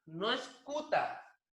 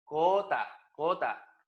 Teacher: Es postvelar, por lo tanto, esta consonante hace que la vocal U tome el fonema O y la vocal I tome el fonema E. ¿Ya? Entonces, yo digo cota, no es cuta, cota, cota.